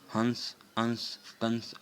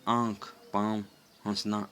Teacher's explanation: हंस, अंश, कंस आदि का उच्चारण करते समय वायु नाक से निकल रही है, लेकिन आँख, पाँव, हंसना आदि का उच्चारण करते समय वायु नाक तथा मुख दोनों से निकल रही है